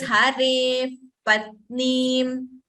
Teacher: There is no fur sound as such. But what happens in Upadmaniya is we need to use both our lips to chant. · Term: Upadmaniya pronunciation